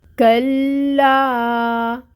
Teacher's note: یعنی کہ لا کو ہم نے 2 حرکت لمبا پڑھنا ہے۔ لام پہ آپ نے ٹھہرنا ہے تھوڑا سا۔ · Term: مد